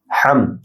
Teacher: হা বড় হা ডিপ হবে , না এক আলিফ লম্বা হবে। ওয়া আনতা খায়রুল গাফিরিন, ওয়া